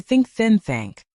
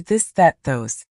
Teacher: put your tongue between your teeth. Blow air for think. Add voice for this.